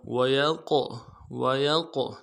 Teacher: قاف موٹا حرف ہے، موٹا کریں گے، قاف ساکن ہو تو قلقلہ ہوگا